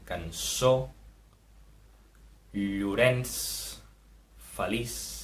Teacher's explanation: Tenim d'una banda la C trencada, que sona com una S sorda, i apareix en paraules com cançó, Llorenç, feliç.